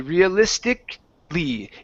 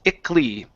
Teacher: So if it ends with that ICALLY, okay, that A vowel disappears. We do not pronounce it.